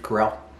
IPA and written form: kəˈrɛl (Carell)